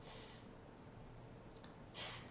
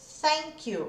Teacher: Então, esse TH, ele é mais soprado. É esse som aqui, ó. Sai um sopro mesmo. Se eu coloco a mão na minha frente aqui, ó, e quando eu faço esse som, eu sinto o sopro na minha mão.